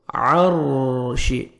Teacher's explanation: را ساکن سے پہلے زبر ہے، آپ نے را کو پر کرنا ہے اور عین کو اپنے صحیح مخرج سے ادا کرنا ہے.